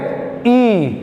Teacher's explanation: आपका मुख पूरा वृत्त के समान नहीं खुलेगा, तो इसीलिए इसको बोला जाता है अवृत्ताकार, क्योंकि मुख जो है वृत्त के समान नहीं होगा आपका, वो क्या बेसिकली आप क्या कह सकते हैं, वो इस टाइप का रहेगा, ठीक है।